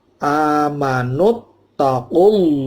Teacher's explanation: Amanut, ya, taqullah sama dengan u, itu juga mad tobi'i, tapi langsung ketemu dengan harfu jalalah, Allah dibaca tafkhim tebal, tasydid langsung masuk.